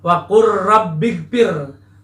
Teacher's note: lam dengan ra dilebur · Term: idgham mutaqarribain